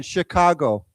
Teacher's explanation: Remember, Chicago is with a sh sound, not s.